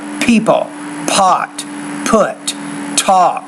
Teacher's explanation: make sure you're pronouncing the tea and the pea with more air